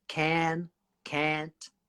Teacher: In America, they would say can, can't, really similar sound. It's just a slight T on the end.